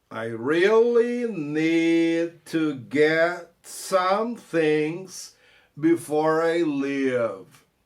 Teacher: E o T que morre no get, né?